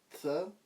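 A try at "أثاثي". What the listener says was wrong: Donc tu as juste pour la lettre, mais faux pour la voyelle. C'est atha, thi. Voilà, donc atha, thi.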